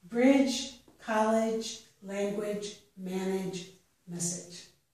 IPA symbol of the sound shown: dʒ